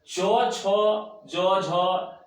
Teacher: च ज झ ये सब का उच्चारण किससे होगा तालु से